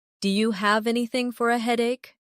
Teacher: Do you sounds like diya.